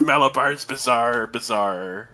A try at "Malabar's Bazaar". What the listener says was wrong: I want to say the fact that you pronounce bizarre and bizarre the same way pisses me off.